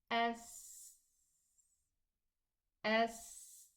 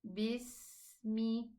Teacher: when I pronounce the sin sukoon, I have to let the sound run.